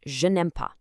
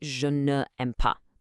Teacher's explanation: When we shift to the negative, that ne actually drops its e and transforms into an n apostrophe. So, we get je n'aime pas. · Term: vowel exception